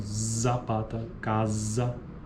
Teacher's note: Fricativa alveolar vozeada, é o Z